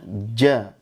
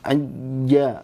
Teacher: tengah lidah disentuhkan ke langit-langit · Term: jim